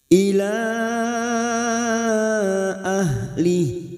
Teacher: Mad yang bertemu dengan Hamzah di lain kalimat Mad Jaiz munfasil Mad Jaiz munfasil lima harakat kita panjangkan Ila ahlih karena kita memilih wakaf di sini maka bunyinya ahlih